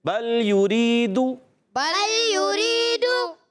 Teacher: یریدو، یریدو نہیں پڑھنا، یریدو معروف پڑھنا ہے، مجہول نہیں پڑھنا · یا پر ہونٹ گول ہو جائیں گے، اور دال پر پیش ہے ہونٹ گول ہو جائیں گے